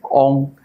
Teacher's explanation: 嗡就是 喉音 從喉部出來的